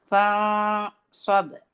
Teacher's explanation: آپ کی اخفا میں زبان بیک سے اٹھ جائے گی. استعلا کی صفت ہونی چاہیے کیونکہ صاد میں استعلا ہے، تو آپ نے جو آپ کا اخفا کا ساؤنڈ ہوگا اس میں بھی استعلا ہوگی.